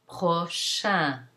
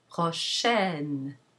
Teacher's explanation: it's possible for that nasal vowel to lose its nasality and become oral. · So our un sound has now become n. A non-nasal e plus the nasal consonant n.